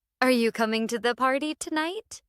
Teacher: Notice how my voice goes up at the end. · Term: rising tone